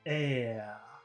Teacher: in the UK or in Australia, maybe they won't pronounce the R. It's just air.